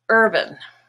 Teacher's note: And think of the word ban, black. Now in the word urban, herb is purple, the stressed part, and ban becomes bun